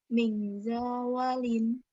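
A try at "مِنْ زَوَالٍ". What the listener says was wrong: Za, bukan jim ya. Min zawalin. Za-nya pendek deh. Za-nya dibaca pendek. Min zawalin.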